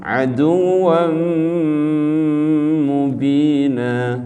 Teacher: Aduwan jadi aduwam ya, aduwan fathatain ya, tandanya dua baris di atas fathatain namanya, ketemu huruf apa? Mim. Nah ini namanya idgham bi gunnah.